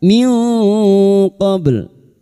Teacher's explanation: Nun sukun bertemu qaf ikhfa hakiki, kita samarkan bunyi nun sukun dan mendengung selama 3 harokat